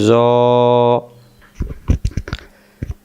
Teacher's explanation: জ অক্ষর জিহ্বার আগা থেকে মোটা করে পড়তে হয়